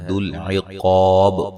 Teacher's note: قاف کو موٹا ادا کریں گے، الف مدہ ہے